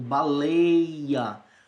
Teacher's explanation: Pessoal, esse ditongo não é aberto, baleia.